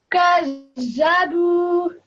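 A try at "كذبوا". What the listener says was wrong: I want you to make a really soft sound. Don't say gazabu with a Z sound, no. Say it in a soft sound like this and that and the. Gadha, gadhabu.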